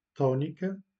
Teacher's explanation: Dans des syllabes accentuées, on dit que la voyelle est tonique ou en portugais tónica. Remarquez que on accentue la première syllabe là où est l'accent